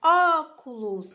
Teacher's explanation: nós temos uma proparoxítona, porque o som mais forte, a sílaba mais forte é no ó.